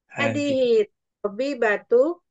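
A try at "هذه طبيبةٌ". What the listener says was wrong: Tanwin. Tabibatun. Tanwin kan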